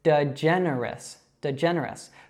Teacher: So that has 2 schwas and 2 short e's, just like her first name. Now that schwa is that sound, and then the short e that we saw before in her first name is eh.